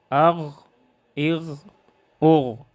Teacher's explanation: آواز موٹی اور جاری رہے استعلاء اور رخوت کی وجہ سے